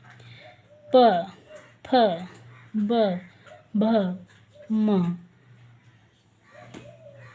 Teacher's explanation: जब पा का आप उच्चारण करेंगे तो आपके दोनों ओठ टच होते हैं। बिना ओठों को टच किए हुए आप प, फ, ब, भ नहीं बोल सकते हैं, तो इसलिए ये हो गए। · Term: ओष्ठ